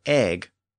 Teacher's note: the Norse version of that word came in with its hard g at the end